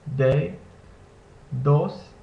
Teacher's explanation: in Spanish the D or the D is pronounced with your tongue touching the back of your front top teeth